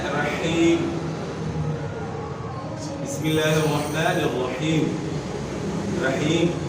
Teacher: ساکن ہے، اور یا ساکن سے پہلے والے حرف کے نیچے زیر ہے. تو اب یا ساکن سے پہلے زیر کی آواز کو ہم نے ایک الف سے زیادہ نہیں کھینچنا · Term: یا مدہ